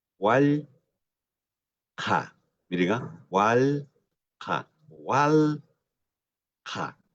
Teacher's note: La segunda a wal ja es mucha más abierta.